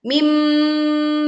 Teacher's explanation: Khuliqa mimma'in. Leburkan nun sukun ke mim disertai dengung yang sempurna, tidak tergesa-gesa.